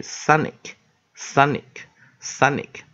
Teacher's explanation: 重音在第一个音节，所以第二个音节这个地方我们用的是弱母音